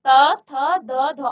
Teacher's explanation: तो आपकी जो जीव है वह आपके दांतों को स्पर्श कर रहा है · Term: त वर्ग